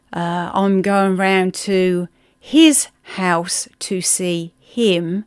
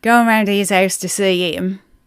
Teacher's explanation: And for example, instead of saying, I'm going round to his house to see him, we would say, going round to his house to see him. So all them H's from the front of, or the beginnings of those words, are completely gone. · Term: drop our H's